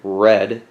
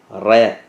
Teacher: need to pronounce the r as a french r which means you're saying the r sound from the back of your throat not with your lips